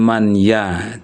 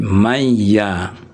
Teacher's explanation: Kalau di belakangnya itu ada huruf ya gitu ya. Jadi man dengan ya ini digabung bukan man ya tapi mayya. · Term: idigham bighunna